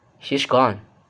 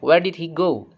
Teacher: And then for the first is the falling tone. Okay, the pitch starts high on the nucleus and drops down